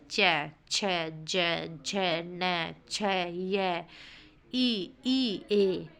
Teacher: ऊपर के दांतों के मसूड़ों से थोड़ा ऊपर तालु से स्पर्श कर उच्चारण करना